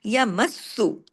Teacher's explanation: सख्ती से जोड़ना है सीन पे तशदीद है लेकिन बारीक तरीके से यमसु अब मुंह आपका हंसने की तरह खुलेगा तो बारीक बारीक